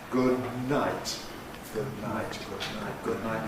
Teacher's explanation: As we go from [d] to [n], what we have to do is adjust the soft palate. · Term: nasal release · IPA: [ˌgʊd ˈnaɪt]